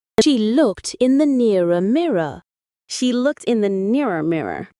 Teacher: Mirror has an I, while nearer has a diphthong of ia. But in American English, the vowels in mirror and nearer are pronounced the same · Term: mirror-nearer merger